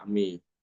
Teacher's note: Kemudian Imam Alqisai juga mengimalahkan fathah mim dan alif yang ada pada kata a'ma.